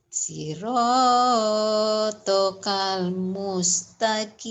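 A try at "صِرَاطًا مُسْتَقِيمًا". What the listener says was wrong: Bagus. Saya kasih satu lagi. Lumayan lah, pinter.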